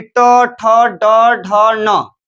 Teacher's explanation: पूरा ट वर्ग का उच्चारण स्थान मूर्धा होगा